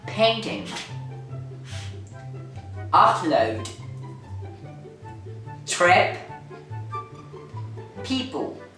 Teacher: it's a bilabial phoneme. It means that it's pronounced by the contact of your upper and lower lips.